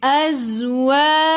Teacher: Zai sifat hurufnya safir kena bunyikan z.